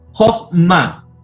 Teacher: en la sílaba cerrada, no acentuada, el kametz es katán, o sea, es decir, es una O